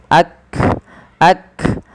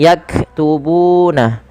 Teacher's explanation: Yang pertama adalah syiddah, tertahannya suara, dan hamas, dia mengadanya nafas kita. Maka ketika melafalkan huruf kaf ini, yang langkah pertama adalah tahan suaranya, barulah alirkan nafas. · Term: huruf kaf yang berharakat sukun